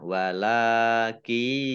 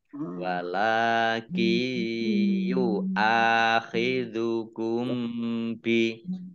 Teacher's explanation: Jadi nunnya tidak dibaca, langsung masuk ke huruf ya. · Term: idgham bi gunnah